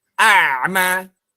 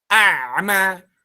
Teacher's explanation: ain itu kan sebenarnya kalau dalam segi sifat dia tidak mengalir, tapi dia juga tertahan sedikit. Nggak bisa a'ma. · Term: sifat bainiyah